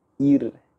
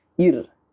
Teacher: Ra tu kita dengar tipis bukan? Ir. Kita senyum.